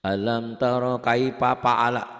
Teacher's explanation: Jadi F-nya tuh ke P gitu loh